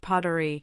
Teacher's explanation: pottery is pronounced pottery, with stress on the first syllable